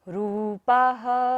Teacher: ह पर पा के बाद विसर्ग है तो सारी सांस का विसर्जन करेंगे